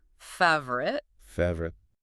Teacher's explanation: We crush it. We swallow the vowels. In American English, it's often just 2 syllables.